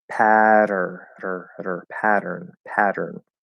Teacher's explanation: For that American sound, okay, here we have a weak T at the start of a syllable, unstressed syllable, right, between two vowels. That triggers the flapped D in American English, even if it's written with a T.